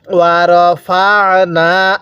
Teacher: আইনটা পড়ার সময় গলার মধ্যে হালকা চাপ দিব তাহলে আইনটা সহি শুদ্ধ উচ্চারণ হবে।